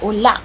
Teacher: ular disebut sebagai ulang di kawasan utara, Kedah, Perlis dan Perak Utara, dan ulau di Melaka